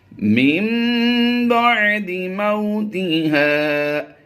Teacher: ہم نے یہاں پر نون کی بجائے میم کی آواز دی ہے